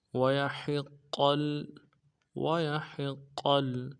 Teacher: قاف کو آگے لام کے ساتھ ملانا ہے